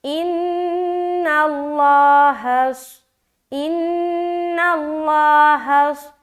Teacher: نون کو جب لام سے ملائیں گے لام موٹا پڑھیں گے کیونکہ اس سے پہلے زبر ہے۔ جب بھی لفظ اللہ کا لام سے پہلے والے حرف کے اوپر زبر یا پیش ہو تو لفظ اللہ کا لام کو موٹا پڑھیں گے، لیکن لفظ اللہ کا لام سے پہلے اگر کہیں زیر ہو تو لفظ اللہ کا لام کو باریک پڑھیں گے۔